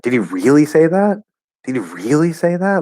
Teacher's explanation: if I go really high in pitch, it's like, wow, like I don't believe it. So it gives this feeling of like how is that possible, right?